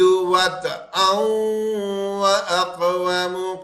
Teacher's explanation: یہ تنوین کے بعد واو آیا یرملون کا، اب یہ ادغام کا غنہ ہو رہا ہے